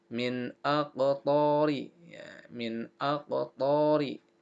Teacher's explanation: nun sukun atau nun mati bertemu dengan alif. Maka ini adalah izhar. Ya, maka dibaca dengan jelas.